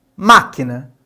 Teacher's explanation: Logo, na palavra máquina, inclusive esse acento recai ali sobre o má, nós temos que esse má é a sílaba tônica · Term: proparoxítonas